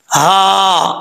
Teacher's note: میم کے آگے الف ہے, یہ جو بیچ میں ہا آ رہی ہے یہ بھاری ساؤنڈ کے ساتھ پڑھا جائے گا کیونکہ اس کا تعلق اس حلق سے ہے جو حلق سینے کی طرف ہے, اس لیے اس کو بھاری ساؤنڈ کے ساتھ پڑھیں گے.